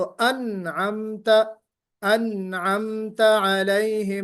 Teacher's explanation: अनअमता में नून पर कलकला नहीं होना चाहिए। अनअमता आपने पढ़ा तो अनअमता, अनअमता अलैहिम, नून पर जुम्बिश नहीं होनी चाहिए।